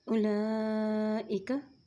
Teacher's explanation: लाम के ऊपर खड़ी ज़बर भी है और मद भी है, इसलिए इसको हम लंबा पढ़ेंगे। और हमज़ा के नीचे ज़ेर है और काफ के ऊपर ज़बर है।